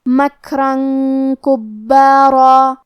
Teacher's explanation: کاف حروف الاخفاء میں سے ہے اور اخفاء کا معنی ہے چھپا دینا، تو ہم یہ تنوین کو چھپاتے ہوئے اور غنہ کے ساتھ یہ حکم کو ادا کریں گے